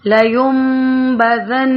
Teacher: یہاں پہ نون ساکن کے بعد حرف با آ رہا ہے تو نون ساکن یا تنوین کا قاعدہ ہے کہ اگر ان کے نون ساکن یا نون تنوین کے فوراً بعد حرف با آ جائے تو نون ساکن کو میم میں بدل کر پڑھا جاتا ہے. لیمبذن اقلاب کیا جاتا ہے.